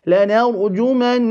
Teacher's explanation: The noon mushaddada, we will give it as well the quality of ghunna and extend that or emphasize it for 2 vowel counts. · the ra should be full because it holds a sukoon and is preceded by a fatha